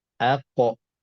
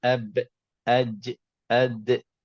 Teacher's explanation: Bahagian dari segi tebal nipis. Huruf qaf dan ta tebal, huruf ba, jim, dal tipis. Jadi qalqalah ikutlah huruf.